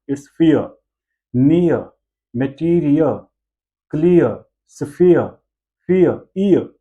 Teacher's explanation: Last वाला र, आर की जो प्रोनाउंसिएशन है उसको हम रोल नहीं करते। इट्स not र, इट्स not फियर, इट्स फियर, नियर, मटीरियल, क्लियर, सफियर, फियर, ईयर, ई, ई और अ, ईयर, ईयर की साउंड, राइट।